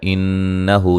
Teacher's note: نون مشدد پہ غنہ ضروری ہے. ہو مد اصلی ہے.